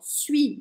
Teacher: Aliás, todas as palavras aqui antes, todos os verbos, eu cortei o final, ó. Suis, eu não falei o S do final.